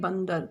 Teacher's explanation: बिंदु यानी कि अनुस्वार। अनुस्वार क्या होता है? जिसकी आवाज हमारे नाक से आती है। तो अनुस्वार जो है बंदर यहां पे न की आवाज दे रहा है।